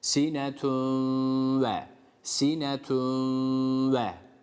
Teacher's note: şu tenvinden vava geçerken ne yapacağız burada biraz tutacağız gunneli okuyacağız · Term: idgam